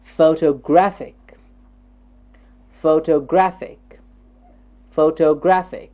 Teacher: photographic photographic photographic it's a four syllabic word photographic photographic yes the stress syllable here is the third syllable